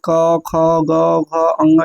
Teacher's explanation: घ जो है आपके कंठ से बोलता है